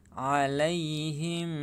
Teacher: alaihim harus ditahan dan didengungkan ya, karena mim sukun bertemu dengan huruf ba. Hukum bacaan ikhfa syafawi.